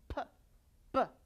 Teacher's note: the place of articulation might be labial, bilabial, p, b, where it stopped altogether